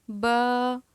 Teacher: حروف شفویہ ادا ہوں گے، با، بند ہونٹوں کے گیلے حصے سے، با، دونوں ہونٹ آپس میں ملیں گے یہاں سے